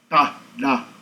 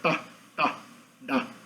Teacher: existe uma retroflexão, ou seja, uma flexão para trás da língua. Então a língua vai, na verdade, mais para cima no palato. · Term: consoantes retroflexas